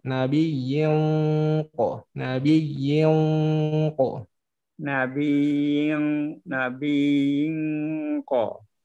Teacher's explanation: Bunyi ikhfa-nya Pak, bunyi nunnya diucapkan ketika bibir kita sudah membentuk ko Pak.